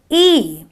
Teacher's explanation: when I do an E, I've got a slight smile on my face and my lips are slightly tense because I'm kind of trying to catch that kind of a smile. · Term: long E sound